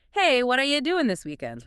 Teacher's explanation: doing often loses that G sound, becoming doing.